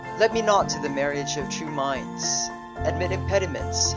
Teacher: we have the pattern of 1 weak syllable followed by another accented syllable, which is repeated all throughout each line. We have to take note that since this is the repetition, we can consider that this is considered as 1 foot. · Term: iambic pentameter